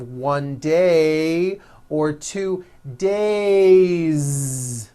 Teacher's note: It's not days, unvoiced. It's days with a voiced Z ending.